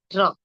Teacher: র এর উচ্চারণটা হালকা কম্পিত হবে আপনি যখন র উচ্চারণ করবেন দেখবেন জীবটা হালকা কম্পিত হচ্ছে র · আপনি যখন র উচ্চারণ করবেন দেখবেন জিভটা হালকা কম্পিত হচ্ছে। র, তাই না, হালকা কম্পিত হয়, একটু কম্পন সৃষ্টি হয়।